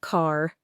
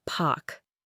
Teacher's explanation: they consistently and often entirely drop that R sound when it appears at the end of words or before consonants